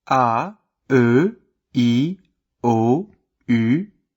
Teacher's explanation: the sounds shorter, less rounded than in English